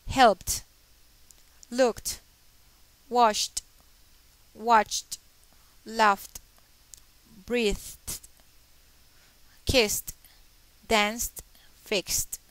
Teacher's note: en alguno de estos, p, k, sh, ch, f, s, s, x. En estos sonidos entonces suenan como una T